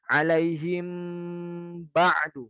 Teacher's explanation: bibir atas dan bibir bawah nempel